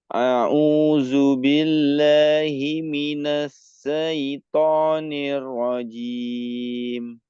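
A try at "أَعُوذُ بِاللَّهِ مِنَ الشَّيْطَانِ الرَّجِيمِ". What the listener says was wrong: Nah, shin alirkan lagi. Ingat, huruf shin itu memiliki sifat tafasyi. A'udzu billahi minasy syaithanir rajim.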